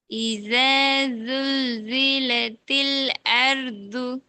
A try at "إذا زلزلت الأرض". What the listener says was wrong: ம் அந்த அழகும் இன்னும் 100% பெர்ஃபெக்டா வரல. லைட்டா தொண்டையில உள்பகுதி போகுது. அர்து அர்து நார்மலா வரணுமா? வரல இல்ல அர்து ஐனு தான் போகுது. நான் சொன்னேனே தில் அர்து லாமையும் அலிஃபையும் வேறுபடுத்துங்க பிரிங்க.